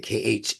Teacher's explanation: that's deep in the gutter of the throat